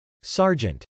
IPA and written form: sˈɑrdʒənt (sergeant)